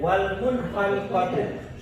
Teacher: nun mati bertemu dengan kha, dan itu harus juga jelas bacanya dan tidak boleh ditahan ataupun didengung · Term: ijhar halqi